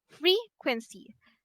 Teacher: the word frequency have the stress on the first syllable